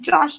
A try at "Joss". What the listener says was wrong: Okay, hold on. It's Joss, not Josh.